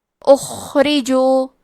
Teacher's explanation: خا حروف تفخیم میں سے ہے تو ہم حرف الخا کو موٹی آواز میں پڑھیں گے. کیونکہ یہاں خا ساکن ہے تو ہمیں خا کو ہمزے سے بھی پڑھنا ہے. ہمزے کا معنی ہے حرف کی آواز ایسے کمزور ہو کہ اس میں پستی پائی جائے. · را کے نیچے زیر ہے. یہاں را کا حکم ہے ترقیق تو ہم حرف را کو پتلی آواز میں پڑھیں گے